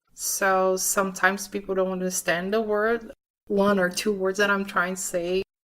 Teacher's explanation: She sings word and say with that typical two-note Portuguese lilt that lifts the pitch on each word.